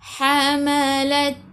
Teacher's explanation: biar ada angin sedikit sahaja untuk huruf ta. Sifat hurufnya hamas, sedikit sahaja angin.